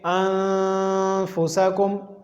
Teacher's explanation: ایک الف کے برابر ناک میں آواز کو لے جانا ہے، اس کو غنہ کہتے ہیں